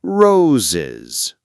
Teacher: In roses, the s adds a small extra syllable like is.